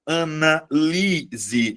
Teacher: Mas aí você vai perceber, analise. A sílaba tônica é a anterior. Beleza? Eh, é a penúltima sílaba.